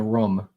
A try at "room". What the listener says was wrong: It sounds like you're saying rum. I'm hearing rum.